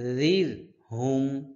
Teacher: জাল র জের জির হ্যাঁ জালের উচ্চারণ করতে হয় পাতলা করে জিহ্বার আগা সামনের উপরে দুই দাঁতের আগাতে লাগাইয়া জালের উচ্চারণ করতে হয় পাতলা করে